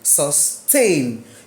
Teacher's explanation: The stress is on the second syllable.